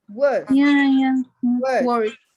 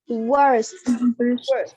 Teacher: No R sound in British English. The R sound, if it's followed by a consonant, it's not pronounced.